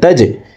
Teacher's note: জিম কলকলার হরফ নিচের দিকে ধাবিত করে ধাক্কা দিয়ে উচ্চারণ করব। তা জিম জবর তাজে।